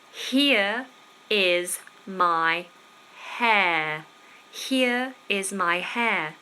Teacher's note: two words there with an r that we don't pronounce